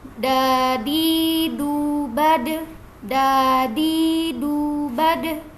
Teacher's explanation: hanya saja untuk huruf Dal ini dia punya sifat Qalqalah Jadi kalau misalkan kita baca dalam harakat sukun maka cara bacanya itu kita pantulkan